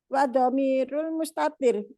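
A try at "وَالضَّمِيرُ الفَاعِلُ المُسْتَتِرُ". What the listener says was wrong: Loh, fa'ilnya nggak diucapkan. Enggak, maksudnya lafad wa dhamirul fa'ilil mustatiru, lafad al fa'ilnya kok nggak diucapkan. Fa'ili mudhof ilaih itu. Wa dhamirul. Mustatirnya jangan disukun.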